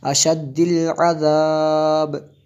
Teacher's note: عذاب آخر پہ یہ جو با ہے اس کو ساکن کریں گے تو یہاں پہ قلقلہ ہوگا